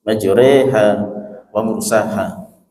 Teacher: Bismillahi majroha wa mursaha, dibaca Bismillahi majreha wa mursaha, rohnya dibaca tarkik tipis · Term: imalah